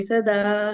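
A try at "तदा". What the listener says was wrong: ಸದಾ ಅಲ್ಲ ಮಾತಾಜಿ, ತದಾ. ಸದಾ ಅಲ್ಲ, ಅದು ತದಾ.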